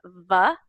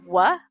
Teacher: your teeth touch your lips, and you kind of feel it in your mouth, and the other one, your lips stay open